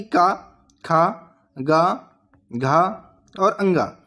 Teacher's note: तो का वर्ग का उच्चारण स्थान यानी कि का, खा, गा, घा और अंगा, इनका उच्चारण स्थान जो कि हो जाएगा कंठ